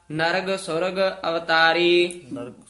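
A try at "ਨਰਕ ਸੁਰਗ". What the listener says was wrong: ताका हुक्म ना बूझे बपड़ा, नर्क सुर्ग, नर्ग नी है, नर्क सुर्ग अवतारी।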